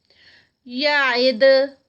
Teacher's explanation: جب اس کو سٹاپ کریں گے تو یہاں پر کلکل آئے گا دال کا، دال کی آواز پلٹے گی